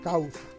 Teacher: Tenemos una vocal abierta junto a una vocal cerrada, en una misma sílaba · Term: diptongo